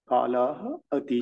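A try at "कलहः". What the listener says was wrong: Kalaha. No. See, when you read, no, maybe you're not noticing, but we are hearing Bahuvachana when you read. Kalaha. Kalaha.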